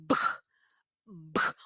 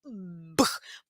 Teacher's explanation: os meus lábios estão fechados. B. Explode o ar. B. E ó, faz uma forcinha no meu pescoço